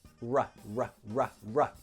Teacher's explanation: Inside the mouth, the tongue does nothing. It doesn't touch anything. This is only with the lips. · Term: R sound